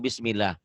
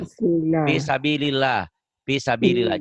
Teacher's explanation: Lafaz Allah dibaca tarkik tipis berbunyi ala bila didahului huruf yang berbaris kasroh